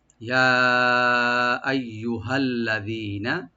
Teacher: ইয়াটাকে open করে 3 আলিফ টানবেন, এর মধ্যে মুনফাসিল 3 আলিফ পর্যন্ত টানতে পারবেন। ইয়া আইয়ুহা, আইয়ু হামজাটাকে রাইট দিবেন গলার শেষ থেকে, আর ইয়াটাকে ডাবল করে রাইট দিবেন। · আইয়ু হামজাটাকে রাইট দিবেন গলার শেষ থেকে, আর ইয়াটাকে ডাবল করে রাইট দিবেন। ইয়ার মাখরাজ হলো ইয়া, জিব্বার মাঝখান তার উপরে তালু, আইয়ু এভাবে ইয়া আইয়ু।